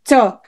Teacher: তালু, এই দেখো তালুতে লাগবে চ, চ, দেখো উপরে তালুতে লাগে চ।